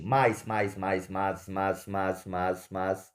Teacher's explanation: eles formam um som só eles ficam juntos por quê Porque o a é forte e o i é uma semivogal fraca logo não há uma separação dessa palavra ela é uma palavra